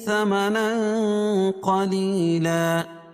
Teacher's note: ثمنا اخفاء حقیقی کیونکہ نون ساکن تنوین کے بعد حروف اخفاء کے 15 حرفوں میں سے قاف ہے تو یہاں ناک میں آواز کو چھپا کر پڑھیں گے